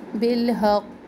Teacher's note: क़ाफ पर यहाँ पे तशदीद है और कलकला भी करेंगे